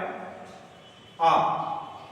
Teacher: आ का हम उच्चारण करते हैं तो मुख सबसे अधिक खुलता है ठीक है तो आ को कहा जाता है विवृत स्वर तीसरा